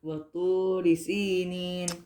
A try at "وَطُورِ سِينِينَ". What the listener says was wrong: Work on the ra kasra, but continue. وطوري. Ra kasra is what? Just tell me what ra kasra is. What is the sound of a ra kasra? So make sure that's what you're missing.